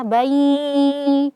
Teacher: Nah, yang sering terjadi adalah kita hanya mengidghamkannya saja, memasukkan huruf ba-nya ke huruf ya-nya, bai, tanpa disertai gunnah, padahal hukumnya adalah idgham bil gunnah. Sehingga harus ada gunnah, harus ada suara sengau dari hidung ya, bayi, jangan bayi.